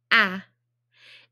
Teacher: it's vibrating so it is voiced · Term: ah sound